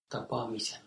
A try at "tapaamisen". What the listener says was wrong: Yes, you have the certain state first.